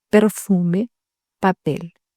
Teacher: La lettre P se prononce P comme dans perfume, papel. Sans souffle d'air.